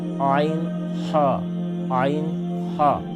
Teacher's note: کہِ طرفہٕ حصس منٛز امی منٛز چھُ نیران تہٕ عین ہا یہ دونوں حلق کے درمیانی والے حصے سے نکلتے ہیں